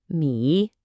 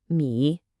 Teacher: It goes down then up. · The correct pronunciation for the character me is me, and that's with a third tone. We call this the dipping tone. Your voice literally has to fall and then rise back up.